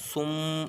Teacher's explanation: تو یہاں پر تنوین کے بعد با آ رہا ہے تو یہاں پر اقلاب ہوگا، اور میم میں پہلی میم میں بھی غنہ کریں گے سم اس طرح سے، کیونکہ میم مشدد ہے، ہمیشہ غنہ کریں گے